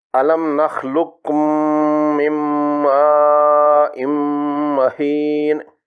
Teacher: اس میں قاف اور کاف قریب المخرج ہیں۔ اس میں مجزوم قاف کو مشدد کاف میں مدغم کر کے پڑھ لیا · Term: ادغام متقاربین